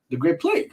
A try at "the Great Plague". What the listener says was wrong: The Great Plague. You said it a little too happy though. The way you said it, like the Great River. You said like the Great Plague.